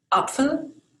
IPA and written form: ˈapfəl (Apfel)